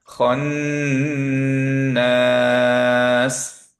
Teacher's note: খন, নুনটা ধরে রাখতে হবে